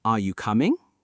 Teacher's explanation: The voice goes up on coming.